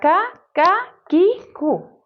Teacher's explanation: کاف مرکک ہے، یعنی کاف کو باریک پڑھا جا رہا ہے